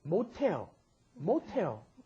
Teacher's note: Because that S at the bottom, when pushed up against followed by an H, turns it into the aspirated sound